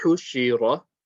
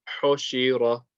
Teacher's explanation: So just they made both the dhamma and the kasra incorrect. So instead of saying hu and she, you might say, you might find people saying ho and she